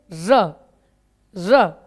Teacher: हम मसूड़े पे जीभ लगाते हैं और पीछे रगड़ते हुए पीछे ले जाते हैं जीभ, इसलिए इसको लुंठित व्यंजन कहते हैं।